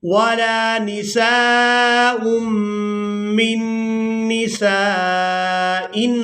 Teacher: میم کو نون مشدد کے ساتھ ملانا ہے. یہاں پر نون ساکن کو چھوڑ دیں گے. میم نون زیر من، نون مشدد پر غنہ کریں گے.